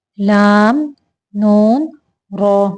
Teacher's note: जुबान की करवट के आखिर से जुबान की नोक तक के हिस्सा से जब व ऊपर के अगले दांतों के मसूड़ों से लगे तो लाम नून और र अदा होते हैं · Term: जुबान के किनारों